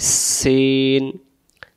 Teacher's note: সিন অক্ষর সামনের নিচের দাঁতের আগা থেকে শীষ দিয়ে পড়তে হয়